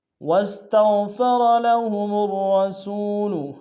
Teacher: لہم میم کو الرسول کے را کے سامنے آنا ہے، تشدید زور دیں گے، دونوں را کو موٹا ادا کریں گے